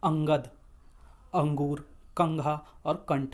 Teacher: वायु मुख के साथ-साथ नाक से भी बाहर निकलती है · इनका उच्चारण स्थान नासिका नाक से होता है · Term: अनुस्वार